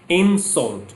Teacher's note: When I use this word as a noun, it will be insult. So the stress will be on the first syllable. First syllable will be stressed and long,